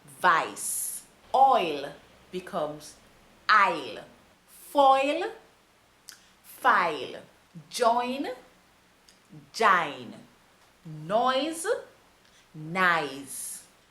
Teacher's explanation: Now, last but not least, we are going to look at words that have OI or OY in them. These words with the OI or the OY pronounced OI are usually translated to sound like I.